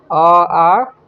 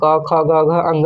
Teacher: कंठ होता है अ और आ के उच्चारण में। और कहाँ प्रयोग होता है, क ख से लेके अंग तक यानी कवर्ग के उच्चारण में।